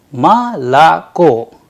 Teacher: the stress falls on the last vowel that is the o · because o not under stress turns into a